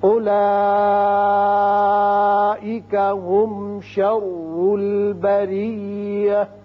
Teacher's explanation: اولئک مد متصل ہے، 5 حرکات کھینچیں گے